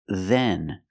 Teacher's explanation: then we have the th sound with a voice then not Den but then touch your teeth with your tongue